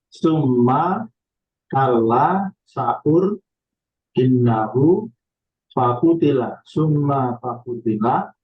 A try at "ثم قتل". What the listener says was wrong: Summa kutila, nggak pakai fa.